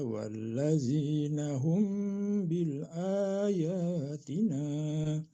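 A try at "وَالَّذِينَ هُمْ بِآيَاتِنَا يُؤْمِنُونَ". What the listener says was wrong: bukan bil ya kedengaran ada l barusan barusan kedengaran seperti ada l mungkin saya salah tapi biayatin bukan bil ayat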